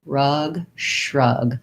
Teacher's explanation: And what you should notice is that if I start with the R, then it's easier to do the SHR because I can just keep my tongue back there in that R position and only really move the lips forward and the tongue a little bit forward to do the SH